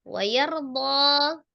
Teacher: ada ro sukun sebelumnya fathah di huruf ya, maka ro-nya dibaca tebal.